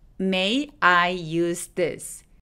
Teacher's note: 중간에 y라는 소리가 하나 들어간 것처럼 발음합니다